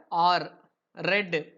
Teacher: பேலட்டோ ஆல்வியோலர்ல ஆர், ரெட். ரெட்டும் வாய்ஸ்டு sound தான்.